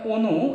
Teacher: লক্ষ্য করেন যে আসলে কি এখানে অনু একটা শব্দ আছে তো অনু এর উচ্চারণ দ্বিতীয় বর্ণে রসুকার থাকার কারণে প্রথম বর্ণের উচ্চারণ ও এর মত হচ্ছে দেখেন তাহলে প্রথম বর্ণের উচ্চারণটা হচ্ছে ও এর মতো তাহলে ও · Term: সংবৃত উচ্চারণ